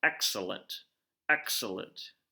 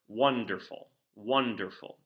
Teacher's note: it's again still three syllables but this one is gonna be stressed unstressed unstressed so there's more emphasis being placed at the beginning of the work you know excellent excellent humanely humanely or wonderful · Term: dactylic